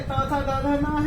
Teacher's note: ये दांत से बोले जाते हैं, इसलिए इनको दंत्य बोला जाता है